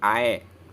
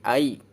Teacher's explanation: Suara ya sukunnya itu bunyinya i, bukan e. Kalau dibaca e jadi ae. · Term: len